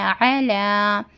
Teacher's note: علا درمیانی حلق سے عین ادا ہوتا ہے